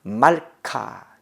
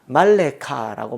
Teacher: 폐음절에 나오는 쉐화는 무성이다. 폐음절, 음절이 끊어지는 거. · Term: 무성세화